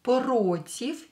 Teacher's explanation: Here you can hear that this V I pronounce as F.